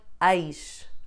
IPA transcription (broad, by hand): ɐjʃ